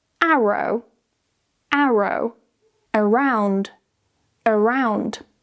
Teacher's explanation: if we have an R in between two vowels, we still pronounce it because we need to separate the two vowel sounds.